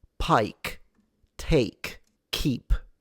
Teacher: there is a little puff of air that comes out of these